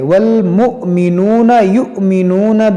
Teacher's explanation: حمزہ ساکنہ ہے، اس کو جھٹکا دے کر پڑھیں گے